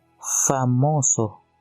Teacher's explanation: Cuando no posee el puntito, simplemente es una fricativa bilabial sin voz que suena como en la palabra famoso.